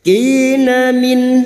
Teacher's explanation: Kina min nun sukun bertemu hamzah idhar halki, nun sukun dibaca jelas tanpa mendengung